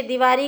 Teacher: स्वरों का ह्रस्वीकरण, दीपावली को जैसे दिवाली कहा जाता है